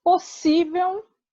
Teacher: Já em possível, a sílaba mais forte é si. Assim, tal palavra é paroxítona.